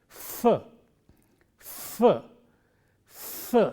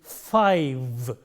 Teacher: Initially it is f, f, f. There is friction coming out between the teeth and the lip, f as in five.